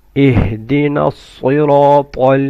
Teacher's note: الصَّاد رَا and طَا are full mouth.